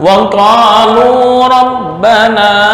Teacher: Kepanjangan wa qalu hanya 2 harokat.